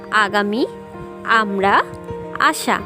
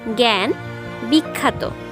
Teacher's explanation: স্বর আ এর উচ্চারণও দু রকমই, সেক্ষেত্রে স্বাভাবিক এবং সংবৃত। স্বাভাবিকে স্বর আয়ের উচ্চারণ আয়ের মতোই হবে, কিন্তু সংবৃতে সেক্ষেত্রে উচ্চারণ হবে এ এর মতো। স্বাভাবিকের উদাহরণ হিসেবে আমরা বলতে পারি আগামী, আমরা, আশা, এবং সংবৃতর উদাহরণ হিসেবে আমরা বলতে পারি জ্ঞান, বিখ্যাত।